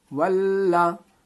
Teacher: वाव लाम ज़बर वल, लाम ज़बर ला, वल्ला, लाम में तशदीद है, तशदीद वाले हुरूफ को पिछले वाले हुरूफ से मिला करके दोबारा पढ़ते हैं।